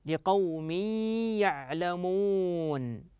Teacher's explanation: ادغام بغنه تنوين كسر اتى بعده حرف الياء والياء من حروف الادغام بغنه